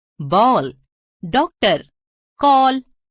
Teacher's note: याद रखिए, आजकल हिंदी में प्रयुक्त कुछ अंग्रेजी शब्दों में आ और ओ के बीच की ध्वनि औ का प्रयोग भी किया जाता है।